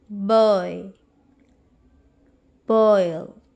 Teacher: O in longer in duration and I is shorter. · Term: diphthong